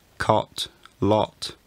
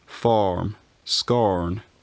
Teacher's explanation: You had a short vowel in cot, lot, but a long vowel in farm, scorn.